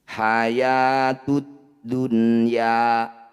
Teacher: Ya, jadi bunyi nun sukunnya baca dengan jelas tanpa dengung. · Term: izhar mutlak